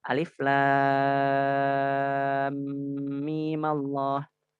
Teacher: kalau misalnya mimnya kita ataupun sukun pertamanya kita beri harokat kasroh, nanti lafaz Allahnya menjadi tipis. Alif lam mimillah, tipis.